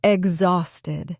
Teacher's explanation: The stress is in the middle.